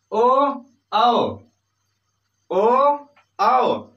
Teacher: कंठोष्ठ इसका उच्चारण स्थान है, कंठ और ओष्ठ।